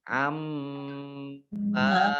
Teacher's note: mim tasdid dibaca gunnah atau mendengung ditahan 2 harokat